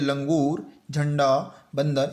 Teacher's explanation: इसके उच्चारण में श्वास नाक से निकलती है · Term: अनुस्वार